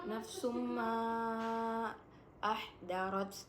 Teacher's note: Nafsum ma ahdarat, di situ terdapat hukum bacaan mad jaiz munfasil karena huruf mat bertemu dengan huruf hamzah pada dua kalimat yang berbeda dan dibacanya 4 sampai dengan 5 harokat